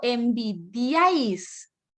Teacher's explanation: Porque así como lo dice Milena y lo confirma Guille, cuando yo digo envidiáis, la mayor fuerza de voz está en la A, pero la A ya es fuerte